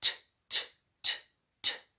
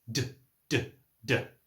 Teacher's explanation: the sounds are exactly the same except the vibration. So everything I do with my lips and my tongue and all of the other parts of producing the sound are the same. · the T sound has no vibration. You shouldn't feel any vibration in your throat, whereas the D sound does. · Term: consonant pair